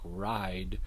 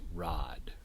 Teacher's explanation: the monophthongization of I. So I mentioned this earlier, a word like ride might be pronounced as rod.